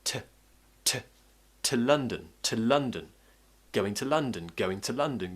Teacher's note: So what's happening is I'm pronouncing to as t, t. I'm using the schwa sound instead of oo, so instead of oo. Just keep the tongue in the middle of your mouth, relax your mouth.